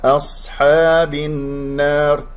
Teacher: أصحاب، باء مكسورة، ننتقل من الباء إلى النون لأنه لدينا همزة وصل واللام شمسية والنون من الأحرف الشمسية